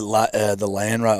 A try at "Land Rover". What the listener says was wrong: You need to pronounce the D because it's a Land Rover. Not a land.